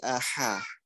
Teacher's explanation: Ha, ingat ha kecil ada desahnya.